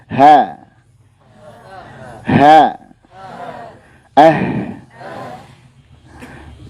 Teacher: ketika kita mengucapkan huruf H, nah itu diperkirakan ketika muncul bunyi itu dari tenggorokan paling dalam